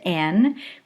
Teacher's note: we are creating closure by the tongue at the alveolar Ridge